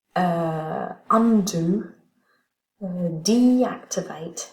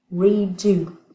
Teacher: Et donc là, on a le droit d'avoir un 2 et un 1 qui sont collés. Donc un accent primaire à la fin et un accent secondaire sur ce petit préfixe.